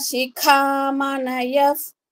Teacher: యకారము ధృత్వాద్య వైదిక శిఖమనయఫ్ శిఖలో క మహాప్రాణము య తర్వాత విసర్గ ఉంది ప ముందు ఉన్న విసర్గ కాబట్టి ఎఫ్ సౌండ్ రావాలి